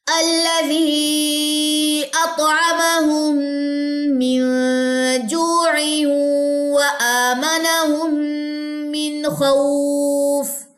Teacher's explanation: یہاں پہ غنہ نہیں ہے کیونکہ آگے خا حروف حلقی میں سے ہے · یہ تنوین کے بعد واو آ رہا ہے تو یہاں پہ ادغام مع الغنہ ہوگا